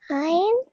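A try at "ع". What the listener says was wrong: Just with the ayn, try if you can to pronounce it from your throat. Ayn.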